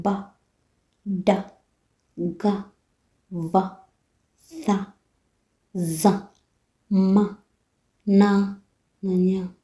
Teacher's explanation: Sauti guna ni sauti zinazotikisa nyuzi za sauti zinapotamka.